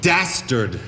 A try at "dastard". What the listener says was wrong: You may say it again, but pronounce that first letter clearly.